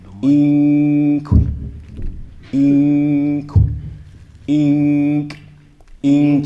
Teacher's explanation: instead of actually saying the kaf, you pronounce the noon from that spot. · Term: Hiding